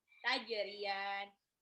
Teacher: taj itu jimnya harus dipantul · ya-nya mad tabi'i dua harokat ketemu sama nun di akhir ayat, jadi mad arid li sukun